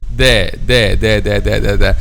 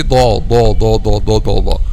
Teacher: Letter del is a light letter. Why? Because the back of the tongue will not be raised. · So what happens if the back of the tongue is raised? We will say do. And this is not the sound of letter del, because letter del is a light letter.